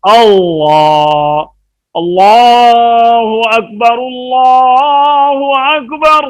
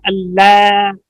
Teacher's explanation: اس لام کو پر کیا جائے اور زبر اور پیش کی حالت میں پر کیا جاتا ہے